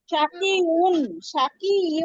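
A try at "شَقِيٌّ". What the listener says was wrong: উন না, ইয়া দুই পেশ ইউন, ইয়া দুই পেশ ইউন।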